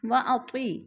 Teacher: یا ساکن سے پہلے تو کے نیچے زیر ہے تو یا مدہ، یا مدہ کو بھی ہم نے 1 الف 2 حرکات کے برابر کھینچ کر پڑھنا ہے۔